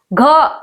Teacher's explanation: घ आवाज आ कहां से रही है आपके? कंठ से।